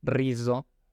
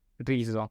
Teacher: tratemos de minimizar esa vibración al principio, siempre pronunciarlo como si fuera una R, incluso al principio de la palabra, y decir rizo.